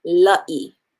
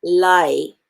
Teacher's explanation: and the i so it becomes la e l a i a is pronounced ah i is pronounced e so i have la e right as opposed to lie as